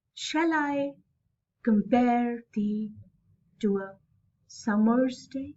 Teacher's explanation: shall unstressed my stress is more on I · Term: iambic meter